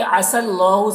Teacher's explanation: سین کو لام سے ملا کر پڑھنا ہے، یا کو نہیں پڑھا جائے گا